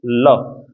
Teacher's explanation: दांत और मसूड़े से जीभ एक साथ टच होगी, बोलना ल। तो जड़ों में लग रही है, दांतों की जड़ों में जीभ लग रही है, तो ये दंत मसूड़ा वाला है। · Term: वर्त्स्य, वर्त्स्य व्यंजन